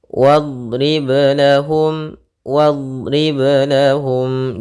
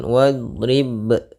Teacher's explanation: jangan sampai ada tambahan hamzah ataupun apapun, dia mengalir suaranya ketika qalqalah ya di tengah bacaan